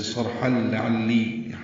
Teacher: ہا لام سے ملا دیا گیا، ادغام ہوا اور یہ ادغام کامل ہے